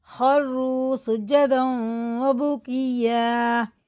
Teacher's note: تنوین ہے اور الف پڑھا نہیں جائے گا. واو میں شد ہے تو غنہ کر کے پڑھیں گے کیونکہ تنوین کے بعد واو پہ شد ہے